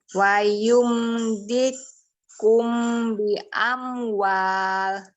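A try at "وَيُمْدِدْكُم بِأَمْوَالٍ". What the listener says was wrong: Mim ketemu baknya masih belum dengung tadi.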